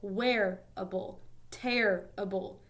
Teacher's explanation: both of those words have three syllables and the stress is on the first syllable